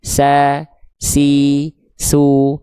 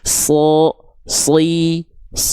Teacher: Huruf shad itu adalah huruf sin dengan versi tebal.